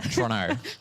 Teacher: you just drop as many syllables as possible and then, merge it all into one